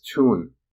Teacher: interestingly there are still some variety dialectal varieties of English in which certain words have survived the Great Vowel Shift in some varieties of English you may still hear the word town as tune